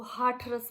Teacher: वो अगर हाथरस आप बुलाएंगे तो वो हाठरस बोलेंगे, ठ उसको उच्चारित करेंगे